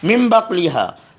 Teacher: نون پر میم ہے تو مم پڑھیں گے، من نہیں پڑھیں گے